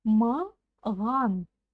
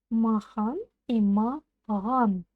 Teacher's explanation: Попробуйте сказать махан через букву Х, а затем чуть-чуть звонче произнести букву Х. И у вас получится буква Г.